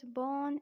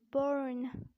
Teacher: It is pronounced as born in British accent. You have to keep R silent because it is followed by N. But in American accent you'd have to say it burn.